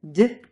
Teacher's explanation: But in Russian, the tip of your tongue flattens out a bit so that the tip of your tongue actually touches your upper teeth and the blade of your tongue, that part right behind the tip, touches your alvea ridge